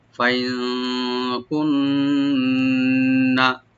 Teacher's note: নুন মোসাদ্দ এখানে ডাবল করে পড়বো আমরা গুন্না সহকারে, ওয়াজিব গুন্না, কিন্তু টান হবে না